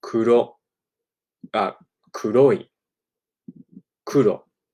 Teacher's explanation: it just taps the kind of uh plateau right before your teeth. So this would be kuro kuroi kuro. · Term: Japanese Rs